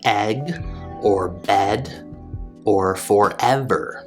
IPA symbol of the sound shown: ɛ